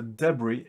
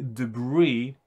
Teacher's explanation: it can be pronounced with a stress on the first or the last syllable